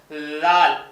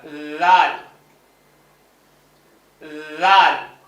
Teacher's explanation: நுனி நாக்கு மேல் பல்ல டச் பண்ணும் தொடணும்